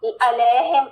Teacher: आइन का ख्याल रखना, वसतुल हलक से